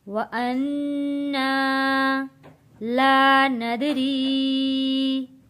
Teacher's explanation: یہاں پہ نون تشدید پہ غنہ ادا کریں گے